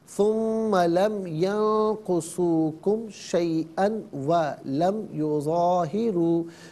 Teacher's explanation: ملا کر پڑھنے کی صورت میں 2 زبر کی تنوین ہے، اسے واو کے ساتھ ملا کر واو کی آواز کو غنّے کے ساتھ ادا کریں گے